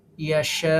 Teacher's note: ইয়াশা শাতে চার আলিফ মাদ